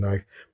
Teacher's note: Middle English, it was pronounced neef, like Kneef, Kneef, and the great vowel shift dropped some consonants like the K